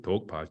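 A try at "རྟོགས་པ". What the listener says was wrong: Not in English D. Tokpa. I always say you should raise your eyebrows.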